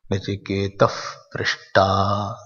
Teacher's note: When Visarga is followed by Pa and Pa, half Fa is pronounced.